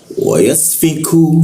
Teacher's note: huruf ku di siku tenggorokan lidahnya diturunkan rongga udara terbuka dan keluar hembusan